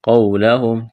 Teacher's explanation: قاف کو موٹا کرنا ہے، واو ساکن سے پہلے زبر ہے، واو لین ہے، اس کو کھینچنا نہیں ہے